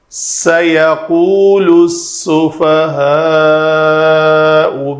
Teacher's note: علم تجوید کے مطابق سین کا مخرج سیٹی کی آواز آنی چاہیے